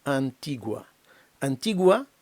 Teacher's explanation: в кінці відчувається дифтонг перехід від у до А